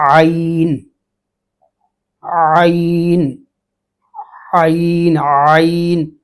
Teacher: تھوڑا گلے کو کھولیں گے، آواز درمیان حلق تک آئے گی، وہاں سے ادا ہوگی تو اس کی ادا ٹھیک ہوگی